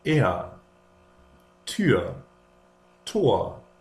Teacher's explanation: if a syllable ends in r, the r is pronounced like a short a, like a. For example, er, Tür, Tor.